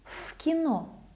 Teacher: В кино, the same thing, voiceless K makes V sound like F.